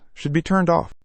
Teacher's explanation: The word be is pronounced lightly, but it cannot be omitted.